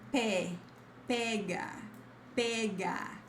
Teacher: pega with an open E